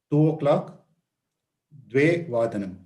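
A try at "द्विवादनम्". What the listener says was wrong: We say Dvivadanam, not Dvevadanam. Dvivadanam. Navavadanam, Dashavadanam, Ekadashavadanam, Dwadashavadanam, Ekavadanam, Dvivadanam, not Dvevadanam.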